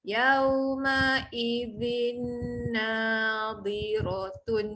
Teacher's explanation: Okay, kita bunyikan zin panjang sikit. Zal tu lidah keluar masuk huruf nun dengung. · ada bunyi en pada tanwin tapi en dia tu masuk kepada bunyi nun sabdu